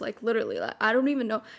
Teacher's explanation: I had that Gen Z vocal fry voice, you know, like the deep one.